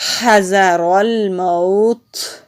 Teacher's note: ہم وقف کریں گے تو تا کو ساکن کر دیں گے، جب تا کو ساکن کرتے ہیں تو وہاں پر ہمس ہوتا ہے، سانس جاری رہتی ہے